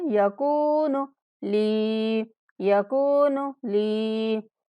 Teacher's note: کاف کے بعد واو مدہ اور لام کے بعد یا مدہ، دونوں کو 1 سیکنڈ تک لمبا کرنا ہے